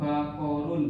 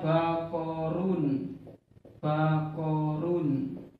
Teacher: bunyi bakorun yang dengan menggunakan tanwin dan bunyi bakorun yang menggunakan nun sukun ini kan sama. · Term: bunyi nun sukun